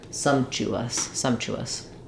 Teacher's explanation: from a front vowel to a back vowel e here o the W sound kind of naturally happens as I'm gliding